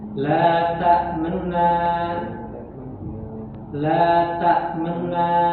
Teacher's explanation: Ketika membaca raum maka syiddahnya itu ditiadakan